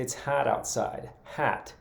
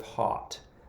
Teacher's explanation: I know that in Michigan, a lot of people take that short O sound and they make it into a clear flat ah sound. So in the summertime, people I know from Michigan, especially people who are from up north, like Traverse City or the Upper Peninsula, will say it's hot outside, hat, instead of hot.